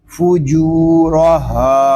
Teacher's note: ہا کو بھی ہم ایک الف تک کھینچ کر پڑھیں گے کیونکہ یہاں پہ الف مدہ ہو رہا ہے